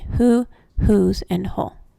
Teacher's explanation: In some WHO words, the letter team WH will say huh instead of its usual sound of w, as in who, whose, and whole.